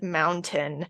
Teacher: replacing T's in the middle of the words with glottal stops, like in the case of mountain